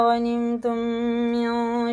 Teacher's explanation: میم ساکن کے بعد میم آ رہا تو یہ غنہ کر کے ہمیں پڑھنا ہے